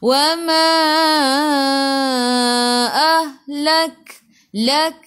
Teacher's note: Lak, sikit sahaja angin pada kaf, sifat hurufnya hamas, sikit sahaja. Lak, na 2 harakat, ada alif mad asli.